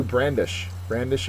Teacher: the first syllable is accented it means to wave or flourish in a menacing or vigorous fashion so these uh